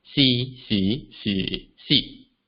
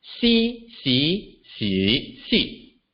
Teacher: on the left, si or yes, is lower in pitch, while the word on the right, si or poem, is higher in pitch.